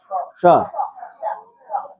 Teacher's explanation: જેમ ટ માં જીભ ઉપર અડે છે એવી રીતે જીભ ઉપર અડાળીને શ બોલો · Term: મૂર્ધન્ય શ